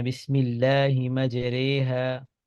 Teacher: لکھنے میں زبر آئے گی لیکن پڑھیں گے امالہ کے ساتھ اور مرقق